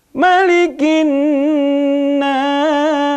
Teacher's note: Ya, ma-nya nggak boleh panjang ya. Sering kedengeran ini ma-nya panjang.